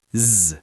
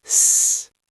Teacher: A sound is voiced if your vocal cords vibrate, like z. Unvoiced if they don't, like s. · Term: Voiced versus unvoiced